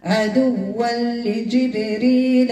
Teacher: إدغام أكمل ما يكون بدون غنة